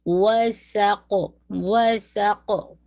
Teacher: سین light اور قاف heavy، وسقو، پورا خمس کے ساتھ اور سین کی وسلنگ ساؤنڈ